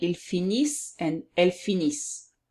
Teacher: you don't pronounce the E-N-T, you just pronounce what's before